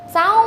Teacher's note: 走发凹的音停在乌的位置，读走，偏向中文的第4声绕上来一点点